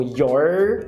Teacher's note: esse R é totalmente apagado, esse R caipira, então your, não vai ter esse e depois o yo vai virar ya.